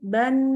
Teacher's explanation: seperti huruf mim, huruf nun juga dibantu dengan keluarnya dengungan dari rongga hidung. Nah, jadi keluar dengungan dari rongga hidung. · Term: gunnah